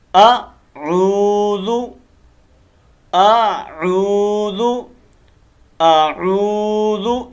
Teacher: اس عین کو تھوڑا لمبا کرنا ہے، واو مد ہے